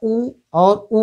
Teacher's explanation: उ और ऊ का उच्चारण स्थान है ओष्ठ।